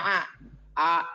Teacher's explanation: kalau terlalu ditekan A itu jadi kayak mirip-mirip Ain. Karena kalau sudah ditekan naik ke atas tuh suaranya ke tengah.